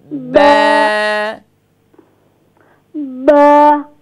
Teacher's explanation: the ba pronounced the wet part of the lips